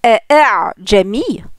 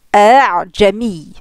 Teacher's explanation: pour le deuxième on va atténuer en fait la prononciation du hamza